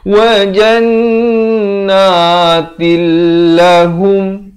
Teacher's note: Asalnya ta tanwin jadi wajannatin. Tapi datang lam jadi til. Terus masuk tanpa dengung. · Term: idgham bila gunnah